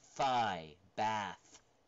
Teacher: The interdental fricative, right? Voiceless fricative. Now there's no voice.